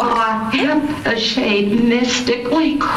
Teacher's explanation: My vocal cords stay open rather than open and shut, and I sound breathy quite frequently.